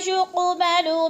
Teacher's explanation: ہیں، وَلَا يُقْبَلُ مِنْهَا شَفَاعَةٌ، یوقو پہ قلقلہ ہو رہا ہے، قوف موٹے حروف میں سے ہے اور ہلا کر بھی پڑھنا ہے قلقلہ کی صورت میں